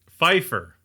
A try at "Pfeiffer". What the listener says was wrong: Pfeiffer. Pfeiffer. I still hear a P when you say it like that. Pfeiffer.